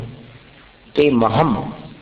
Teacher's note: अनुस्वार का उच्चारण म जैसा होगा